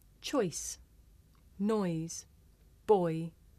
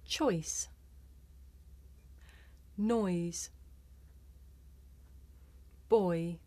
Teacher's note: this is a diphthong a double vowel sound the shape the mouth makes changes from the beginning of the word to the end